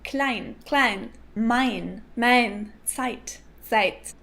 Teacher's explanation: Austrians say something between a and ah